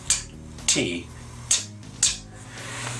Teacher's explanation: you're taking the tongue and putting it against the back of your front teeth and you're letting air go after building up pressure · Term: explosive consonants